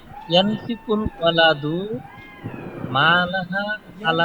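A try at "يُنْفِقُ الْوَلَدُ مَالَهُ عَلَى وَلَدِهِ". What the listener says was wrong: ইয়ানফিকু কেন হবে রে ইয়া, ইয়া যেহেতু আসছে ফেয়াল মুজারের একটা আলামত, তো আমরা জানি বাবুল ইফআল ফেয়াল মুজারের শুরুতে পেশ হয়, এটা মাথায় রাখা উচিত। ইউনফিকুল ওয়ালিদ, ওয়াওয়ের পর একটা জবর আছে,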